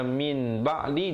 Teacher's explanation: nun mati ditukarkan bunyi nun kepada bunyi mim yang nipis, 2 harakat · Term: iqlab